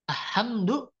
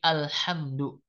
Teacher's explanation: jadi Si lam sukunnya harus dibaca jelas